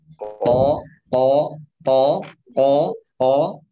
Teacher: lidah pangkalnya naik. Terangkat ya. Ya. Sehingga suara juga terangkat. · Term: istila